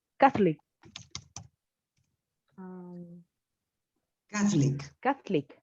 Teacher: the stress is in the first syllable